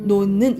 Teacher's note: 디귿과 니은이 만나면 무슨 현상이 일어나냐면 비음화 현상이 일어나요